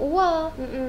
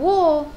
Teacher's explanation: apabila huruf waw dibariskan dengan atas kita sebut wa. Bukan wo. Wa bukan wo.